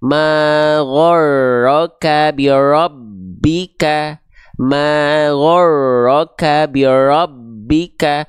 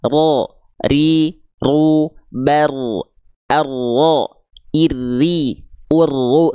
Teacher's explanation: takrir itu artinya dia bergetar Namun bukan dengan getaran yang terlampau berlebihan ya takrir jadi ketika kita lafalkan getarannya hanya sedikit saja ma